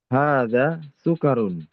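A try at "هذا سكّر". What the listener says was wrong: Sukarun. Di situ kan ada tasydidnya ya.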